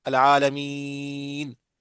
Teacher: جو عرب پڑھتے ہیں لمبا لمبا پڑھتے ہیں العالمین، آگے کیونکہ سکون آ رہا ہے نا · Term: مد عارض للسکون